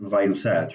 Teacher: Now notice that the fa here has a V kind of sound.